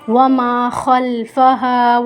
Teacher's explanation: الف مدہ کو ہم ایک الف کی مقدار کھینچ کر پڑھیں گے